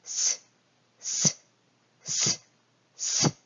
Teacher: 혀 끝이 거의 그 아랫잇몸 쪽에 거의 붙을락 말락 하면서 뭔가 비벼지면서 마찰이 일어나면서 시옷 소리가 만들어지죠. 그래서 이 혀 끝과 치아 사이가 붙어서 치아 쪽에서 비벼지면서 만들어지는 소리다라고 해서 이 치아의 모양을 본떠서 시옷이 만들어졌다라고 합니다.